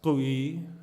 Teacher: In Navarre it's kui with a glottal k.